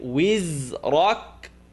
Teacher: The ra is heavy, kaf is light.